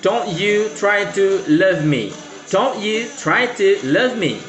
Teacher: Don't stressed or strong. You unstressed or weak. Try strong. Two weak or unstressed.